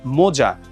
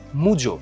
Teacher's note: এখানে ও যেমন হয়ে গেল উ, আ হয়ে গেল ও। এটা হচ্ছে অন্যন্য স্বরসঙ্গতি।